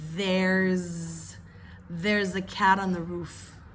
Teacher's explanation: you've got the S turning sounding like a z with the vibration